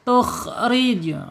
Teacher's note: getarannya tidak boleh melebihi dari dua. Awas enggak boleh tukri. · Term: takrir